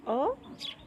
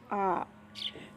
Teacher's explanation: दीर्घ स्वर में बोलने में ज़्यादा समय लगता है, दोगुना समय लगता है